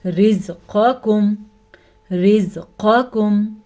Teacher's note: قاف کو موٹا پڑھیں گے کیونکہ قاف یہ موٹا ہے اور یہ ساتھ ہی باریک کاف ہے